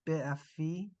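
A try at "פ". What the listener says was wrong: No, no, P. There's a period inside it. Bit a P.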